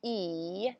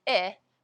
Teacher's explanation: in American English we differentiate between the sound E which is a long sound and it which is the short sound